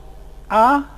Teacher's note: the low Central vowel